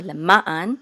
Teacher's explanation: we want to put the accent on ma